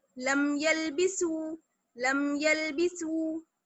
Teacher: اس کو جلدی سے پڑھیں گے بنا غننے کے, بنا دیر کیے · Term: اظہار